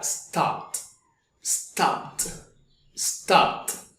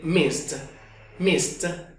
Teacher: esas palabras que tienen el sonido voiceless al final tendrán la pronunciación de una T al final. El pasado de stop sonará stopped, stopped, stopped.